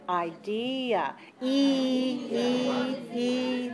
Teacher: so the second syllable is strong and that's the stressed one